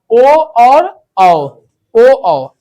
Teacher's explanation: तो जिस वर्ण का उच्चारण कंठ और ओठ से हो उसे हम क्या कहेंगे? कंठस्थ्य। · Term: कंठोष्ट्य